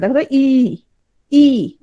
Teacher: প্রথমে আসো সম্মুখ স্বরধ্বনি মানে হচ্ছে সম্মুখ তাহলে সামনে মানে হচ্ছে উচ্চারণের সময় তোমার জীব সামনের দিকে কি হবে প্রসারিত হবে